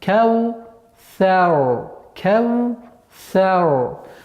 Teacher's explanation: Ра твердый звук в данном случае. И она максимально твердая. Потому что если буква ра с сукуном и впереди стоит огласовка фатха, то она становится твердой. · Вот это са. После губного звука вау резко уходить на межзубный звук ся немножко сложновато.